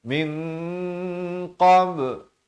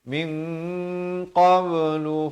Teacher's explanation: Wa harramna alaihil maradi'a min, di sini ikhfa hakiki dua harakat samar ya